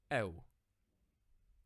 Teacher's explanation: You combine the two vowel sounds, particularly the epsilon sound and the English U sound